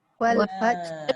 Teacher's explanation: sifat dia bila ha pedas angin tu paksa keluar. Bila dia mati angin tu jadi wal fath.